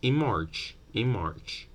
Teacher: Instead of going in March, the n will borrow the bilabial place of articulation from m, and you end up saying in March, in March.